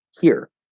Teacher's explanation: And you can pronounce them as here with an R colored I sound, the second vowel I, here. Or you can pronounce it with an R colored first vowel E, here. And then an H at the beginning of either one.